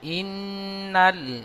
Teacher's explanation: নুনটি লামের সাথে যুক্ত হবে, একটু টান হবে না। ইন গুন্না হবে।